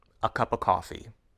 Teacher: when the word of loses its consonant sound it sounds exactly the same as the word ah